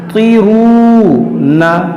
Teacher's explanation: अम हुमुल मुसैतिरूना, और यहाँ पर देखिए त्वा को मोटा करेंगे ती, और यहाँ पर देखिए वाव मद्दा है, वाव साकिन से पहले पेश है, ये वाव मद्दा है, इसको खींचेंगे